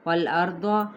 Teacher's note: را ساکن ہے، ما قبل فتح ہے تو پھر ہم را پر پڑھیں گے